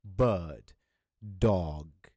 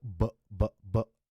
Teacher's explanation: passes through our vocal chords Vocal Track sorry it and then our vocal cords vibrate as well at the same time they produce a buzzing sound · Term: voiced consonant